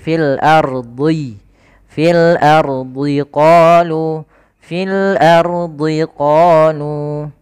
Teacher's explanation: Ro sukun sebelumnya fathah maka dibaca tebal. Kemudian di, huruf do jangan di.